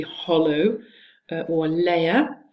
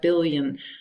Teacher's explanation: You hear a clear l, meaning you have e resonance,